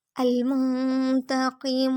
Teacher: تا نقطوں والا باریک پڑھیں گے، موٹا نہیں کریں گے، اور زبر کو لمبا نہیں کریں گے۔ نیکسٹ قوف نقطوں والا موٹا ہوگا، قوف کی زیر کو کھینچیں گے نہیں۔ میم پہ بھی حرکت ہے یعنی پیش، اس کو لمبا نہیں کریں گے۔ · المنتقم، میم کو نون سے ملائیں گے، نون ساکن اخفا کریں گے یعنی ناک میں آواز چھپائیں گے۔ تا نقطوں والا باریک پڑھیں گے، موٹا نہیں کریں گے، اور زبر کو لمبا نہیں کریں گے۔ نیکسٹ قوف نقطوں والا موٹا ہوگا، قوف کی زیر کو کھینچیں گے نہیں۔